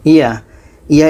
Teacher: Ini dibaca panjang karena ada huruf Alif yang didahului oleh vokal atas. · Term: Mad Asli